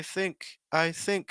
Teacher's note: So I need to make sure I'm going higher on think.